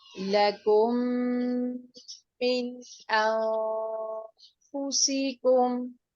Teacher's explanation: یہ میم مشدد ہے، میم ساکن کے بعد میم آ رہا ہے، تو یہاں پر ہم ادغام شفوی کریں گے